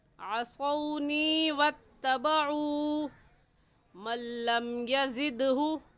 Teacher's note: असौनी को हम खींचेंगे और ऐसे ही वत्तबउ को भी खींचेंगे क्योंकि वाव साकिन से पहले पेश आ गया तो ये वाव मद्दा कहलाएगा। और वाव मद्दा को भी एक अलिफ की मिकदार खींच कर पढ़ते हैं